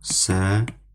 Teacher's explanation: Deməli, səhiyyə. Burada tələffüz zamanı bir Y ilə tələffüz olunacaq. Y-nin biri düşəcəkdir.